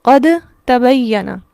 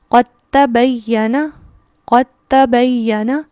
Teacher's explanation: لیکن ہم نے کیا جانا کہ یہاں پر ادغام ہوگا، اور ادغام میں کیا ہوگا؟ ادغام تام ہے، لہٰذا دال یہاں پر اس طرح سے ہوگا گویا کہ دال یہاں پر ہے ہی نہیں. قوف ڈائریکٹ تا سے ملے گا.